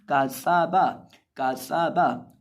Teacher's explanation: और जब हम काफ को पढ़ेंगे, सीन को पढ़ेंगे और बा को, तीनों को बारीक पढ़ेंगे, किसी भी हरफ को हम मोटा नहीं करेंगे। और इसी तरह सीन के अंदर हम सीटी की आवाज़ पैदा करके पढ़ेंगे क्योंकि ये सीन हरूफ ज़फ़ीरिया में से है